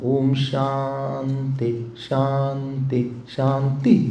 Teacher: और ध्यान देकर सुनिएगा, इसमें ओम अगर आपके पास मंत्र पुष्पम हो तो उसमें देखिएगा, ओम शांति शांति शांति। जो आखिरी में ता है वो नीचे जाता है। हाँ, बाकी जगह ता में ऊपर जाता है।